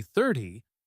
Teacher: If I say 30, the stress is on the first part, thir, and the ending is a soft tie.